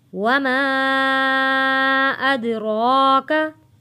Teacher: दाल हरूफ़े कलकला है, आवाज़ वापस पलट कर आएगी। रॉ के ऊपर खड़ी ज़बर है, खींच कर पढ़ेंगे और रॉ को मोटा पढ़ेंगे।